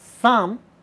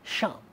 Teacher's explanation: a speaker of Hindi from Bihar would say Sam instead of Sham, and that's not their fault either, it's just that it's an output of conditioning.